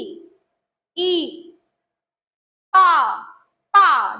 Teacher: आप बोलेंगे इ प देखिए प में दोनों होठ मिल रहे हैं